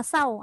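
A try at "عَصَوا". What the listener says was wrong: Jadi sa kan? Dia bukan sa, tak ada huruf sa. So asawwaka.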